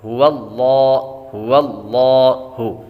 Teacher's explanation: هو اللہ، هو اللہ، اور لام پر کھڑا زبر ہے، کھڑی حرکات کو ایک الف یعنی دو حرکات کے برابر کھینچ کر پڑھتے ہیں، کیونکہ کھڑی حرکات حروف مدہ کے قائم مقام ہے۔